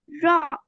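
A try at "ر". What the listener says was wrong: விளங்கல. ரா ரா அல்ல ரா. தடிப்பமா வரணும். தடிப்பா போதா? ரா அல்ல ரா.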